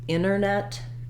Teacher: when there's NT together you can leave off the T